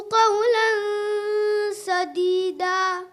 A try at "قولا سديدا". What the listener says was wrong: When you stop at place like Shadida and making the stop, where there's a fathatain changes into one fatha, maddul iwad there, well, there's a slight mud, but it seems the sound is too much of an upper sound, more of an elevated sound rather than a lower sound, in my opinion.